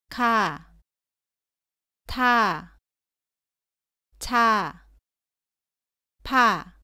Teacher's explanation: 가, 다, 바, 자와 발음은 비슷한데 공기를 더 많이 밖으로 내면서 발음합니다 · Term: 거센소리